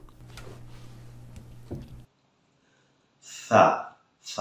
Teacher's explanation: ছা হবে জিহ্বার আগা উপরের দাঁতের আগা